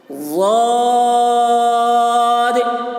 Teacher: ضاد کی آواز بھی موٹی ہے اور اس کو زیادہ کھینچ رہے ہیں